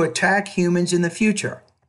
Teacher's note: slightly higher pitch at the end of each thought group and once I got to the end of the sentence my tone fell